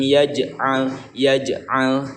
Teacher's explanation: jadi ada pantulannya ya, tetapi tidak terlalu memantul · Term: qalqalah subro